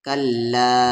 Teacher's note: کا کو لام ہے، کل لام پہ لام کے ساتھ الف لا، کل لا مد کے سمبل کے بعد حمزہ ہے تو 3 سے 4 الف کے برابر کھینچیں گے، کلا یعنی اس لام کو 3 سے 4 الف کے برابر کھینچیں گے